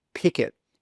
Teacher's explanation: that final K sound in pick is a consonant. And the first sound in it is a vowel sound. So those two sounds join together. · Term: catenation